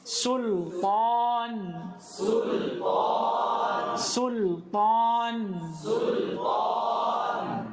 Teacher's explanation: Kenapa perlu kita perhatikan tipisnya sin pada kata-kata ini? Karena kadang ada orang membacanya dengan sad. Dia tebalkan.